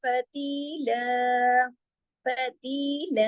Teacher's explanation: ती के साथ याए मद्दा है, ती दो हरकत, ला दो हरकत, अलिफ और जबर के साथ पढ़ा जाएगा।